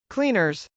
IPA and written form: klˈinɚz (cleaners)